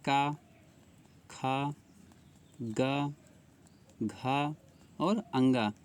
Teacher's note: क वर्ग आ जाएगा। कंठ में क वर्ग पूरा आ जाएगा।